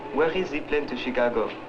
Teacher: The words of the French speaker begin on a fairly high pitch and gradually fall to a low pitch on the final syllable.